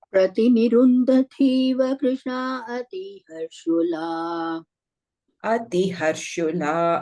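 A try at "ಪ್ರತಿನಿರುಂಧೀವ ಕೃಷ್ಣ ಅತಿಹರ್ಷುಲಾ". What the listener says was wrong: ಅತಿ ಹರ್ಷುಲ ಅತಿ ಹರ್ಷುಲ ಅತಿ ದೇರ್ ವಾಸ್ ದೀರ್ಘ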